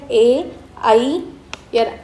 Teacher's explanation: आणि तर यामध्ये आपण बघतो हे कशामध्ये येतात ए आई यामध्ये कंठ प्लस तालू या दोन्हींचा त्याच्याशी संपर्क येतो म्हणून त्याला आपण कंठतालव्य वर्ण म्हणतो परत एकदा समजून घ्या ए आई याचा संपर्क आहे तो कंठ